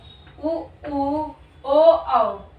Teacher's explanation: समय हमारा मुख हमारा होठ जो है गोलाकार स्थिति में हो उसे हम वृत मुखी स्वर कहते हैं